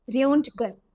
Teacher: German R is guttural, like gargling lightly at the back of throat, not like Hindi R.